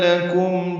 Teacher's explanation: لکم میں کاف باریک میم ساکن پہ اظہار شفوی